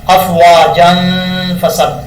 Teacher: اب جیم کے اوپر 2 زبر ہیں، آگے الف ہے، یہاں پر سمجھنے والی بات ہے۔ ملا کے پڑھیں گے تو غنہ ہوگا، ایک الف کی مقدار نون تنوین کا اخفاء ہوگا۔